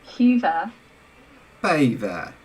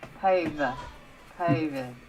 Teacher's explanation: you really push that a forward for that diphthong